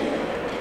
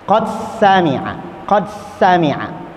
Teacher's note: Jadi qadnya itu tidak begitu diqalqalahkan. Qad sami'a, qad sami'a, karena dimasukkan ke dalam sin.